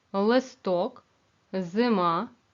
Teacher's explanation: ненаголошений звук и у вимові наближається до звука е